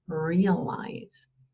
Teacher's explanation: die Betonung ist auf der ersten Silbe